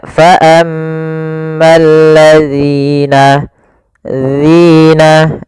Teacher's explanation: Agar sempurna dari makhraj dan sifatnya adalah ujung lidah kita tempelkan dengan gigi seri atas, agak kita keluarkan sedikit sehingga berbunyi zi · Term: huruf zal